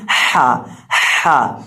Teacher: ہم حا کو حلق کے درمیان سے ادا کریں گے، حا کی آواز آئے گی حا حا، اور سین کے اندر ہم سیٹی کی آواز پیدا کر کے پڑھیں گے۔